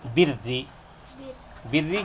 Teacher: زیر والی رائے مشددہ کو باریک پڑھیں گے